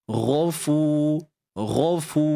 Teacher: Untuk ghain hujung kerongkong ni, kita tebalkanlah. Akad pangkal lidah.